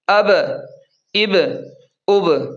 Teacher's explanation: با پر بھی قلقلہ ہوگا یعنی با کو بھی تھوڑا سا پڑھتے وقت ہلائیں گے۔